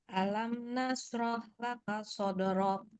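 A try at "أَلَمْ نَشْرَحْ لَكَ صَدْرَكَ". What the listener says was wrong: Ya, di huruf shin jangan lupa. Nash gitu.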